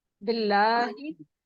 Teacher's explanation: आवाज, हाँ, खड़ी खड़ी जबर, उसकी भी आवाज 3 अलिफ के बराबर नहीं है, दो होती है इसकी आवाज